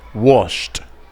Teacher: Wash no tiene vibración no tiene voz por lo tanto lo pronuncio como t